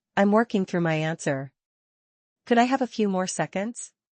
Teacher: Rising pitch on more seconds.